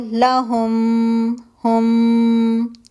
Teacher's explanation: मीम साकिन मीम मुतहरिक के अंदर मर्ज हो गया। मीम मुतहरिक जो है वो मुशद्द हो गया है।